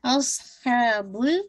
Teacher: करेंगे, हमजा की शार्प रखिएगा, अस स्वाद को मोटा रखिएगा, अस्हाबुल हा को 2 count with middle of throat से इंशाल्लाह, बुल इस पे बाउंस नहीं कीजिएगा, टाइम दीजिए लेकिन इसको